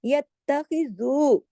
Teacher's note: खा मोटा पढ़ा जाएगा, यत्त, खा को खराश के साथ